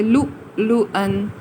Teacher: جو سب سے اوپر اس کے اوپر حرف ہے وہ قائم رہے گا اور نیچے والا واو کینسل ہو جائے گا. ہم اس کو لمبا حروف مدہ نہیں بولیں گے بلکہ ایک جھٹکے سے ادا کریں گے